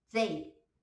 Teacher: Mas reparem que você não fala they, você não fala com o T, você fala they, puxando para o Z